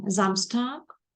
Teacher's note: літеру с яка стоїть на початку слова з голосними звуками вона дає звук з